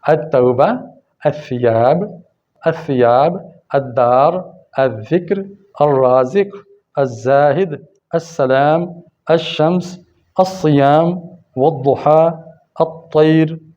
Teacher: ان سب میں دیکھیں لام بالکل سائلنٹ ہے